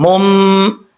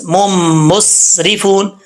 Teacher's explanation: آگے میم ہے، میم کو میم کے ساتھ کنیکٹ کریں گے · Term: ادغام